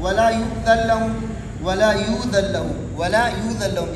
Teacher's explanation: اور نون کا لام میں ادغام ہے، یہ ادغام کبیر ہے · حمزہ ساکنہ سے پہلے پیش ہوگا تو حمزہ واو سے تبدیل ہوگا